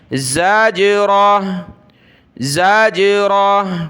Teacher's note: جیم کو منہ میں گھمانا ہے، یہ قلقلہ ہے، یعنی حرف کو اس طرح ادا کرنا کہ وہ راؤنڈ کرے، گھومے